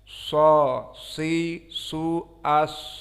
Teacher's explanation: makhraj sad barakallahu fikum tarful lisan ma'ama fauqa as-sanaya as-sufla